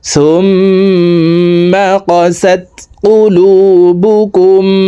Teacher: তাসদিদওয়ালা মিমের সাথে 3 সেকেন্ড পরিমাণ গুন্নাহ করে পড়ব। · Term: ওয়াজিব গুন্নাহ